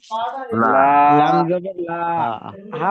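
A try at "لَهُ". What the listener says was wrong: লাম টান হবে না লাহু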